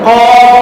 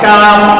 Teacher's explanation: একটা কফ গোল হয়ে যায়, একটা কাপ একটু পাতলা হয়ে যায়